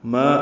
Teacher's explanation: ما الف مدہ ہے، 2 حرکات لمبا کریں گے